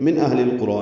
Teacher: نون ساکن پہ اظہار ہے، ہا ساکن پہ ہمس، اہل القرى لام ساکن پہ اظہار قمری، قاف را دونوں پر ہیں، را کو 2 حرکات لمبا کریں گے.